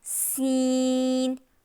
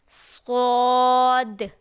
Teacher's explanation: سین کو باریک پڑھتے ہیں، صاد کو موٹا پڑھتے ہیں، اور ہم قرآن پاک میں یہی غلطی کر دیتے ہیں کہ جہاں پہ سین ہوتا ہے وہاں پہ موٹا پڑھ لیتے ہیں تو وہ صاد پڑھا جاتا ہے، اور جہاں صاد ہوتا ہے وہاں باریک پڑھتے ہیں تو وہ باریک سین میں آ جاتا ہے۔